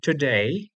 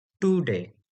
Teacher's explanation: The ta sound in English that we have is actually alveolar sound or originating from alveolar ridge of the mouth. The Sanskrit ta is the retroflex ta.